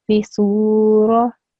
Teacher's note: this vowel is a vowel mad, so this C needs to be prolonged